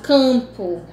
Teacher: esse M ele não é pronunciado, esse M é para dar nasalidade ao AN. Então, nós diminuímos um fonema.